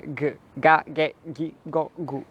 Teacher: sempre essa plosiva velar sonora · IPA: [ga ge gi go gu]